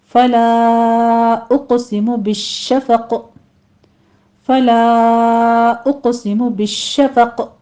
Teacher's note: शीन के ऊपर तफशी होगी और तशदीद भी है, सख्ती कीजिए। और आखिर पर जो क़ाफ की कसरा है वो हम ड्रॉप कर रहे हैं, यहाँ पे वक़फ़ कर रहे हैं, तो यहाँ भी कलकला पैदा हो जाएगा। · आखिर पर जो क़ाफ की कसरा है वो हम ड्रॉप कर रहे हैं, यहाँ पे वक़फ़ कर रहे हैं, तो यहाँ भी कलकला पैदा हो जाएगा। ये भी आपने जल्दी से पढ़ना है और कलकला यहाँ पे कवी किया जाएगा दोनों जगहों पे।